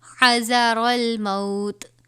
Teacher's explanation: وقف مطلق میں یہ تا ساکن ہو جائے گا